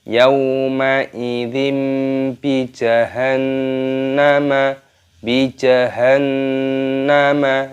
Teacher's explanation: Nun tasydid hukumnya dibaca hunah cara membacanya yaitu dengan cara didengungkan